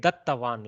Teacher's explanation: Don't produce a hakara because it's still alpa prana. Though it is a double ta, there is no ha coming out.